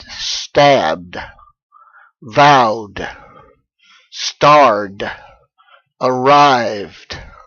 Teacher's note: Now, if it is a softer voiced consonant like l, r, w, d, b, or a sound like e or e, the vowel sound, then again, you don't pronounce the e of the ed ending. You simply pronounce the ending itself as duh, as a voiced consonant.